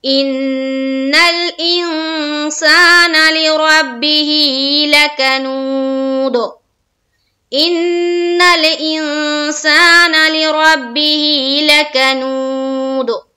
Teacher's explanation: ان الانسان لربه لکنود، اور دال کے اوپر جب ہم کریں گے وقف تو یہاں دال کے اوپر جزم آ گیا تو یہاں بھی قلقلہ ہوگا، کیونکہ دال بھی حروف قلقلہ میں سے ہے